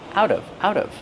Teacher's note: The T changes to a fast D. Out of, out of.